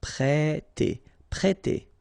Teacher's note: it will produce the sound E, so really open, E, so prêter, prêter.